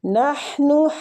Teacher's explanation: ہا وسط الحلق سے نکلے گا